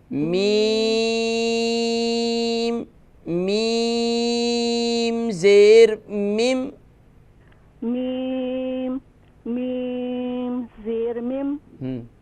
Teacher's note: دونوں میموں کو 5 الف کی مقدار کھینچیں گی تو پھر صحیح طور پر میم ادا ہوگا